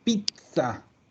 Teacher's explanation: Acuérdense siempre que la Z es dura, es súper dura. Y lo más parecido que tenemos en español vendría a ser una TS.